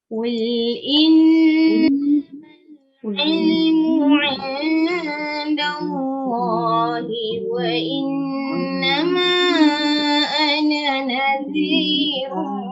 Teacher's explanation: Qul sama juga muncung pada huruf qaf, lam jangan muncung.